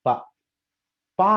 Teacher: ప పా అన్నప్పుడు సౌండ్ ఎక్కడ జనరేట్ అవుతుంది? 2 పెదాల కలయిక. ఈ 2 పెదాలని ఇలా నోరు పెట్టుకొని మీరు పా అని చూద్దాం.